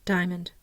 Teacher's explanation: if we say it fast enough we won't even hear the second syllable it will sound like a two syllable word